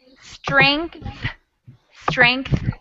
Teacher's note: the th and that's really hard to hear because it's a really quiet sound